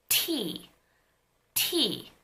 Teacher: when you say Tee tee there is no vibration